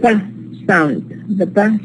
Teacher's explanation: So because pa is bilabial, we use the two lips to produce the sound, so it has this feature.